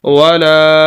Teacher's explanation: لام کے آگے الف ہے، اس وجہ سے ہم لام کو لمبا کر رہے ہیں، اور یہ الف الف مدہ ہے۔